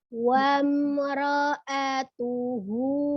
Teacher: mim sukunnya dia izhar ya, jelas ya. Rohnya tidak monyong. Monyongnya hanya di wa saja.